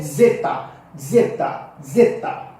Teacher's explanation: corresponde ao nosso Z mas com o som de D com som de d s ou d z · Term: som biconsonantal